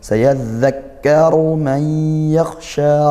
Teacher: ra-nya ru dhammah dibaca tebal dengan menaikkan pangkal lidah.